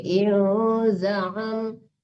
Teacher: dilatih-latih membaca ain tepat pada tengah-tengah tenggorokan